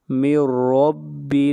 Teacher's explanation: نون ساکن کے بعد حروف یرملون میں سے را ہے، ادغام بلا غنہ ہوگا۔ من رب، اور را کو موٹا پڑا جائے گا، را کے اوپر زبر ہے۔